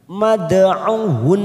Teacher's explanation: Dal sukun warna biru namanya qalqalah sughra. Kita pantulkan mad'uhun. Karena kita wakaf di sini maka huruf nun yang bertasdid langsung kita tekan sambil kita wakafkan 3 ketuk.